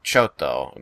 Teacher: if they have a doubled consonant in Japanese in them which when it's spoken in the language usually there's like a small pause in your voice and then you hit the consonant hard like chotto the Japanese word chotto is c h o t